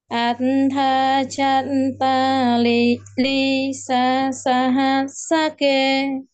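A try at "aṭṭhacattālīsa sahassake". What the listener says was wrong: À, ▁lắng ▁nghe ▁cho ▁kỹ, ▁đọc ▁cho ▁nó ▁đúng ▁trường ▁âm, ▁đoạn ▁âm ▁và ▁những ▁cái ▁chữ ▁phụ ▁âm ▁ghép ▁nha. ▁Atha ▁chat ▁chữ ▁thá ▁phải ▁đọc ▁nó ▁liền ▁với ▁chữ ▁chat, ▁không ▁đọc ▁atha ▁chat ▁là ▁nó ▁trật ▁cái ▁nhịp ▁ha. ▁Atha ▁chat ▁ta ▁li ▁sa ▁sa ▁ha ▁sa ▁ke.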